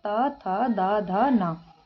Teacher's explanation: जिनकी आवाज दांतों के योग से आती है उसे दंत वर्ग कहा जाता है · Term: दंत वर्ण